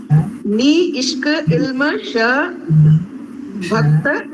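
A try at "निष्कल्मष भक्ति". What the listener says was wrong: Bha and kya. Bak nahi. Bha kya. Kya is together. So whenever you see a long word, you might get confused and say there is another letter. No. Nishkalmasha bhaktya.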